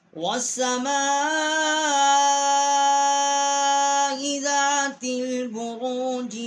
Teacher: واو کو ہم نے سین کے ساتھ مشدد کیا ہے، اور میم الف ما اس کے اوپر بڑی مد ہے، 4 الف جتنا یہاں آواز جو ہے وہ ہم نے کھینچی ہے، اس کو بلند کیا ہے ہم نے آواز کو۔